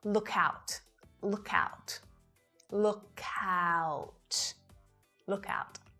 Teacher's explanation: Often native speakers link the consonant at the end of one word to the following word if it starts with a vowel. So instead of releasing the k after look, we combine it together with the ow vowel sound at the start of out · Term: linking